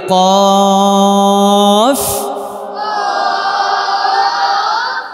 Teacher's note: কফ জিব্বার গোরা উপরে লাগিয়ে